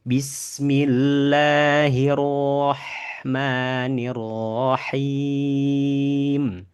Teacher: Rahma tipiskan. Ketika rnya tebal, ha-nya tipis.